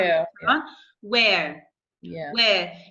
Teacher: we don't pronounce the R, we pronounce it as like schwa